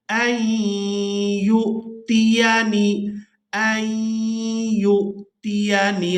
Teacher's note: या को हमज़ा साकिन के साथ मिलाएंगे तो झटके के साथ अदा करेंगे।